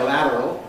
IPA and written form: ˈlæt̬ərəl (lateral)